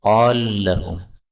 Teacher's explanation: Yang pertama pada ayat 79, sahir boleh dibaca saharin. Ayat 80, qala lahum, lam ketemu lam, boleh idgham, qal lahum.